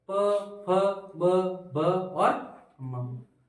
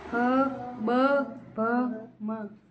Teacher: जब बोलते हैं, उनका उच्चारण करते हैं, तब होठ दोनों सिपकते हैं। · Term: ओष्ठ